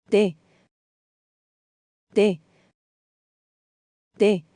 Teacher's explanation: To say tea in Spanish, the tongue should touch the teeth and there should be no explosion of breath after moving the tongue away.